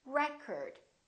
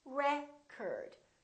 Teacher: if it's a noun it's pronounced as record the first syllable is stressed record this o changes so it's not o it's a record